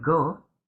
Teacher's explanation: since in the word go, the O is open, the syllable is open, the O is pronounced as a long O, since vowels in open syllables are always long.